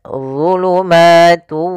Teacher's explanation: Kemudian zulumatu, di sini ada dha tebal, wu. Ujung lidah kita menempel dengan gigi seri atas dan pangkal lidah terangkat